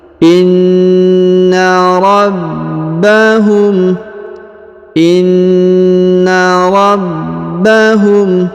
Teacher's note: huruf ba ditahan dan ditekan karena terdapat tanda tasdid